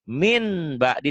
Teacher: iqlab bunyi n-nya jadi m tapi bindeng